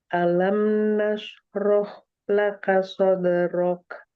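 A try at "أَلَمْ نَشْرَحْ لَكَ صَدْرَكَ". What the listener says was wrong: Roh lebih dimaksimalin lagi. Alam nashrah laka, kurang hamasnya. biar dulu desisnya keluar. Alam nashrah laka sadrak.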